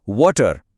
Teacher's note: હવે અહીં ખાસ ધ્યાન આપજો. ડબલ્યુનો ઉચ્ચાર પણ વ થાય છે, પણ તે બોલતી વખતે હોઠ ગોળ થવા જોઈએ.